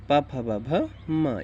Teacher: प वर्ग ये ओट से बोला जाता है